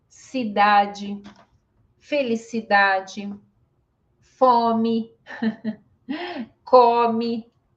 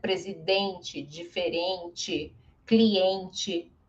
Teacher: E aí todos finais de palavra ele fica mais fraco e aí ele fica com som de i, né? presidente, diferente, cliente, vai ficar com som de i.